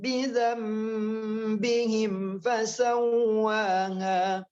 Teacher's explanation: jadi hukumnya ikhfa syafawi disamar-samarkan di bibir.